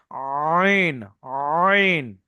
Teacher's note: যে কন্ঠনালীর মাঝখান হতে আইন উচ্চারিত হয়। কন্ঠনালী বলতে যে গলার যে শ্বাসনালী এর ভিতর থেকে কিন্তু কথার শব্দ বের হয়।